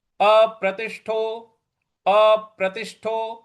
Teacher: अप यहां पे जो हमको प है उस पर बल लगाना है।